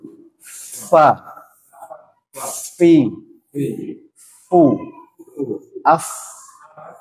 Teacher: bibir bawah bagian dalam bertemu dengan dua gigi seri atas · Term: huruf fa